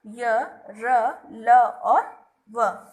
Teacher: जिन व्यंजनों को बोलने में हवा बहुत कम रुककर बाहर निकलती है, वे अंतस्थ व्यंजन कहलाते हैं।